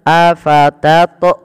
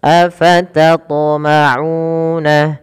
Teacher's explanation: Nah, itu menambahkan hamzah. Harusnya qalqalahnya, pantulannya tidak ada menambahkan hamzah.